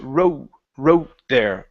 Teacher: the tone of that o needs to come up right before you get to the th